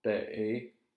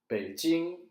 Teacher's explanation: if you notice the third tone in Beijing, when you say it in a word, it's low. But when you say it by itself, look, I'll say this by itself, Bei.